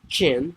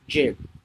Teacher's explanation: It is important to pronounce the voice of J sound clearly to avoid changing the meaning.